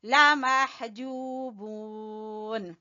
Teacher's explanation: ہا کو وسط حلق سے پڑھیں گے اور جو کو کھینچیں گے واو مدہ کی وجہ سے، بو کو بھی کھینچیں گے واو مدہ کی وجہ سے.